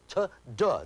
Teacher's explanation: The tip of your tongue hits the inside of your upper teeth in exactly the same way to form those two sounds.